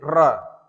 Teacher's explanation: जिन वर्णों का उच्चारण करते समय हमारे जीभ में 2 से 3 बार कंपन होता है उसे कहते हैं प्रकंपित व्यंजन। जैसे र, र अगर आप बोल रहे हैं तो आपकी जीभें 2 से 3 बार लड़ रही हैं तालु से